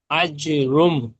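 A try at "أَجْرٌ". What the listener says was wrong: রুম নয়, রুন। রুম নয়, রুন, র দু পেশ রুন।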